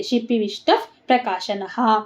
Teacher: ಷ್ಟ ಮುಂದೆ ವಿಸರ್ಗ ಅದರ ಮುಂದೆ ಪ ಫ ಪ್ರ ಇದೆ ಅಲ್ವಾ ಅದಕ್ಕೆ ಅರ್ಧ ಪ ಆಗುತ್ತೆ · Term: ಅರ್ಧ ಫ